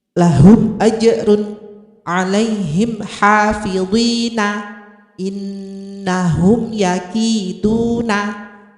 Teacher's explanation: bunyi mim sukun dibaca jelas dengan bibir tertutup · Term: idhar syafawi